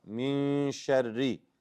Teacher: you do ikhfa and the ra is light.